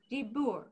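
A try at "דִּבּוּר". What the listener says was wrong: Yes, you got it. Very nice.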